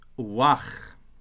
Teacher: If you read liturgically, you should say uwach because this softens the beth.